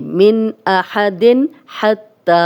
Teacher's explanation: تنوین تھی، تنوین کے بعد بھی حا آ گیا تو ہم غنہ نہیں کریں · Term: اظہار حلقی